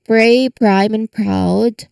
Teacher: Rising and the tip not not quite touching anything. So it's a quick pop up of air from the P followed by the R sound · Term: per blend